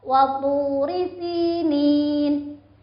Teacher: Maka berikan haknya yaitu panjangnya 1 alif atau 2 harokat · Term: mat tabi'i